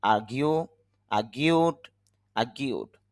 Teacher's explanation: র সাউন্ডটা কম হবে না বললেই চলে